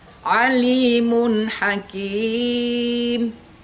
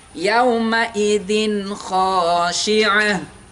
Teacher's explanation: kenapa dibaca idhar? Karena suara nun sukunnya harus dibaca jelas. N-nya kalau dalam Latin harus jelas.